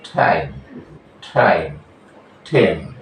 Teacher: এটা হলো ট এবং ঠ এর মাঝামাঝি সাউন্ড হবে